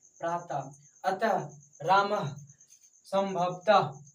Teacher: विसर्ग का उच्चारण करते समय ह का ध्वनि निकलता है, उसी को कहते हैं विसर्ग कहते हैं।